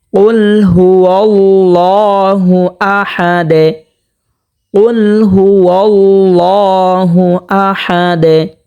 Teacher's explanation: আমরা এখানে দেখতে পাচ্ছি লামের উপর খারা জবর হয়েছে, এখানে একালিফ পরিমাণ টানিয়া পড়ব এবং এখানে কিন্তু একটা কলকলা হবে, যেমন আহাদে ওয়াকফ হওয়ার কারণে দালটা সাকিন হয়ে যাবে, এখানে দালকে কলকলা করিয়া পড়তে হবে